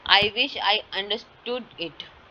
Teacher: single piece of information with a focus on the word understood. There is falling tone indicate that it is a statement.